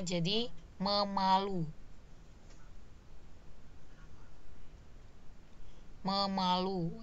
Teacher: Jadi ada fonem eng atau fonem en di afiksnya yang hilang. Oke, karena dia ketemu kata dasar yang berawalan pe.